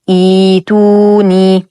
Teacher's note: عند الابتداء نلاحظ أن ثالث حرف الفعل ضم ضما عارضا، إذن سنقوم بكسر همزة الوصل حال الابتداء، وبالتالي سيتبعها ياء مدية ساكنة